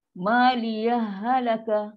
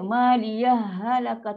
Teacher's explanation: Tapi dia tak adalah bunyi saktah terstop tu. Dia sebab ha dengan ha, huruf yang sama. So dia sekali masuk je. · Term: idgham